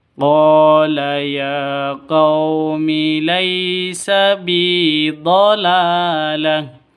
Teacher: Qala panjang 2 ketukan, mad asli karena ada alif diawali dengan fathah.